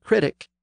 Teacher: Critic came in about 400 years ago, and again the stress has shifted to the first syllable.